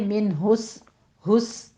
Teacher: सीन के ऊपर सीटी की आवाज़ आएगी